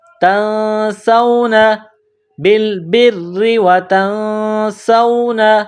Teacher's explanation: نون ساکن کے بعد سین ہے، حروف اخفا ہیں تو آواز ناک میں چھپائیں گے۔